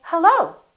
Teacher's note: to meet you or i can make the rising intonation and when i answer the phone i can say hello so the pitch goes up